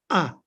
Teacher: and then the little line under it is the vowel so the cutting off of breath and then the vowel and the straight line is an ah sound